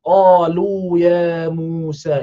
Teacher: Qa panjang. Dua harakat lu, dua harakat ya, dua harakat mu, dua harakat sa.